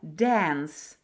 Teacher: Учебник дает звук «а», но большинство ребятишек и взрослых сейчас произносят на американский манер «э» – «dance». Это не ошибка, это американизм.